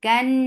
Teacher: This is gunna akmal, so keep the sound in your nose for a longer time.